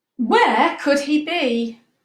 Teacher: we'll make sure we've got that question voice where our voice goes up a little bit